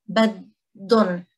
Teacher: we are disregarding the ha sound, which you might hear in other Levantine dialects.